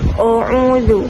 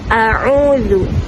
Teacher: sebutan Alif perlu ditipiskan dengan tidak mengembungkan mulut yang akan mengeluarkan sebutan yang tebal